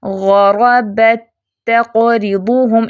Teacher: پچھلا تا اگلے تا میں مل جائے گا، مدغم فیہی کی آواز غالب ہوگی